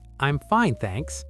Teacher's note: Quick and smooth. The fine is the important word, so that's where your stress goes.